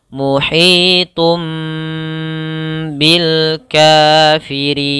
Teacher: Cara membacanya adalah kita tahan dulu suara tumnya baru masuk ke ba. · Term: iqlab